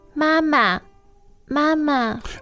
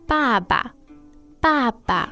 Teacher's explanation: so just to remember that mother is first tone and father is fourth tone